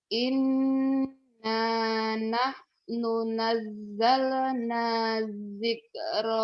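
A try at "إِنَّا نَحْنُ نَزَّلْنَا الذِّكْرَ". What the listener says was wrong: Inna nahnu nazzalnad. Matobinya nggak jadi panjang karena ketemu tasdid. Nazzalnad dzikra wa inna lahu lahafizun.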